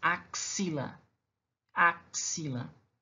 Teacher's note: Eu tenho 5 letras, mas tenho 6 fonemas, porque esse X ele tem um som de KS